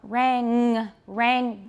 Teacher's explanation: can you feel the back of your tongue touching your soft palate · make sure that it's that it's velar and that you're not saying rand